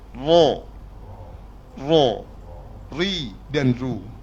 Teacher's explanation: Mana hujung lidah kita kena sentuh sentuh gusi, dan belakang lidah kita angkat.